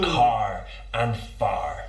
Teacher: accents it's non- rotic so we don't use that R but in the west country that R is pronounced